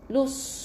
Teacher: Ada angin dalam mulut. Berkumpul di bawah mulut kita. Jadi tebalkan huruf sad tu. Lepas tu baca dengan dua harakat.